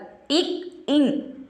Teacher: இக் இங் ஆகிய இரு மெய்களும் நாவின் முதற் பகுதி அன்னத்தின் அடிப்பகுதியை பொருந்துவதால் பிறக்கின்றன.